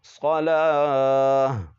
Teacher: وقف کی حالت میں گول تا کو ہا پڑھیں گے